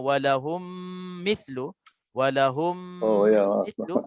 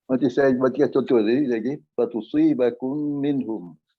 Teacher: Mim mati bertemu dengan mim. Bacaannya dengung 2 harakat. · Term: idgham mithlain